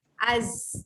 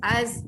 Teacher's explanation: Az. Hujung lidah anda ditekan ke gusi bawah. Jadi ketika dengung, sang tu dekat bawah. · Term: huruf zai